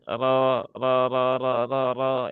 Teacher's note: ra yang berbaris fathah dia dibaca dengan tafhim ya pastikan dilatih ya punggung lidah bagian belakang tempelkan ke langit-langit depan kemudian pangkal lidahnya juga dinaikkan · karena yang monyong itu hanya untuk harakat dommah kalau dia fathah ya jangan dimonyongkan